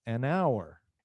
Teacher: An hour, hour começa com H, mas não pronunciamos o H, então nós falamos an hour. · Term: o H é mudo